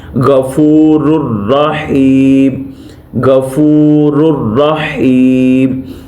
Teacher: इसके बाद है लास्ट पे हमारे पास जो एक एग्जाम्पल बची है वो है गफूरुर रहीम, गफूरुर रहीम, ये तनवीन आ गई है, रा के ऊपर 2 पेशें आ गई हैं, इसके बाद आ गया रा, तो यहाँ पे रा को रा के साथ जम तो करेंगे, मलाएंगे तो सही मगर गुन्ना नहीं होगा।